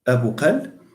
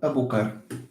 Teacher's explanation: In some dialects, it's with the l. In some other dialects, it's with r. In the dialect I speak natively, it's this r.